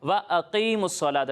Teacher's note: اچھا بچوں یہاں پر اس بات کا خیال رکھنا ہے کہ حمزہ کی آواز بالکل واضح ہونی چاہیے